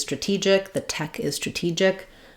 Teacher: In stra-gy, of course, it's flapped, but in stra-TEE-gic, this stressed syllable acts just like a T at the start of words, and so we use that true T. So I've rewritten that here with, again, the letter T, and also now our letter E is going to say the tense E sound because it's stressed here.